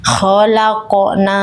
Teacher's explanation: Nah, huruf qofnya dibaca tebal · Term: qof sukun